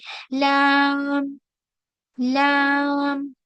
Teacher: जुबान की नोक बिल्कुल सामने की तरफ नहीं रहेगी, थोड़ी सी शिफ्ट होके साइड में रहेगी।